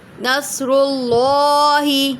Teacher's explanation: نصر اللہ، اللہ کے نام سے پہلے پیش ہے تو پر پڑھیں گے